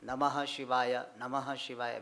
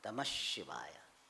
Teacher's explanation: We should chant Namah Shivaya. So Visarga is changed to Shakara. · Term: sandhi